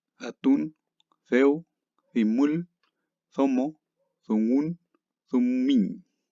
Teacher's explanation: Con D, que es un sonido entre D y Z